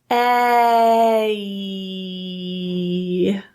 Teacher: There is a transition from that kind of neutral position of your tongue, very neutral lip position, to a smile and the tongue pulled up.